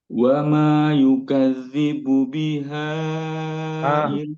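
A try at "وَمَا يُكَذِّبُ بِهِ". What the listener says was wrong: Kok biha jadinya bi.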